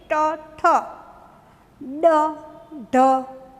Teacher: ટ, ઠ, ડ, ઢ વળે છે ને મૂર્ધન્યમાં, જીભ આખી વળી જાય છે, એના વગર નહીં બોલાય.